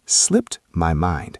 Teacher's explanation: When natives say this fast, the D in slipped almost disappears.